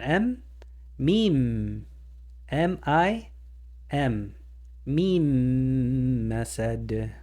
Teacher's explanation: so we're going to pronounce this m twice and don't forget the nasalization the vibration from the nose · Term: double M sound